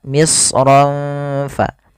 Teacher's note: Ikhfa menyamarkan suara ro-nya kepada huruf fa